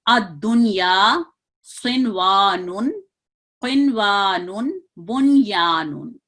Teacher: इसको हम नून को इजहार से पढ़ते हैं, जाहिर पढ़ेंगे, पूरा मुकम्मल नून अदा होगा। अद्दुनिया सिनवानुन, क़िनवानुन, बुनयानुन, इसको मख्फी और गुन्ना के साथ नहीं पढ़ा जाएगा।